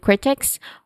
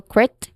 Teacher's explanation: Basically when you try to say this phrase critics might might argue that pronunciation wise we start with critics where the the stress syllable is on the first syllable